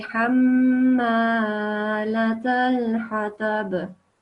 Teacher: And this meme, just like with the noon with the shadda, the same happens with the meme with the shadda. Meme mushaddad, you have to make a nasal sound. So you say حمالة الحطب.